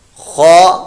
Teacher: خو حلق کے اوپر والے حصے سے ادا ہوتا ہے، حروف مستعلیہ میں سے پر موٹا ادا کریں گے اور اس کو لمبا نہیں پڑھنا، خو یہ لمبا ہو گیا،